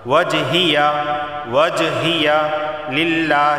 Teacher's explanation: دیکھیں جیم حروف قلقلہ میں سے ہے، با جیم دال قاف تو یہاں قلقلہ ہوگا۔ وجہیہ للہ، لفظ اللہ سے پہلے زیر آیا ہے تو لفظ اللہ کو باریک پڑھا جائے گا